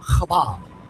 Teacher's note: The word Hobab, it has that guttural chet, and so it's not an H sound.